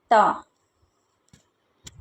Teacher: त बोलने में हमारी जो जीभ है वो दांतों को स्पर्श कर रही है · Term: दंत्य वर्ण